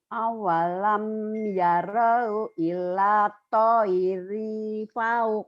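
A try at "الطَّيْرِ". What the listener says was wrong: pendek. Ilat toiri. Kenapa panjang? Nggak ada mat ya Bu.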